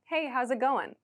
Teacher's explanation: There's not really a G sound at the end. And we don't say, how is it going?